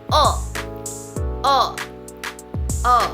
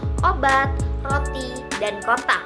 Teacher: lidah berada di bagian belakang mulut agak sedikit lebih rendah dari U dan bibir dibulatkan. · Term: vokal belakang